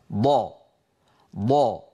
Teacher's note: من حافة اللسان اليمنى أو اليسرى أو منهما معا، مع ما يحاذي ذلك من الجدار الداخلي أو الصفحة الداخلية للأضراس العليا، مع ما يحاذيه من الأضراس العليا، هكذا ضا ضا. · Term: الضاد